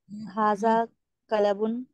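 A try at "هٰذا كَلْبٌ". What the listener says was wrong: कलबुन, कलबुन नहीं है, कलबुन, लाम सुकून आएगा, हादा कलबुन ये डॉग है।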